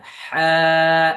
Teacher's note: এটা গলা চেপে বাতাস বাহির করতে হবে হা এরকম ভাবে হা বলা যাবে না ওকে বলেন সুন্দর করে